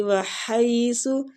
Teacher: ہا وسط الحلق سے نکلے گا، سو نرمی کے ساتھ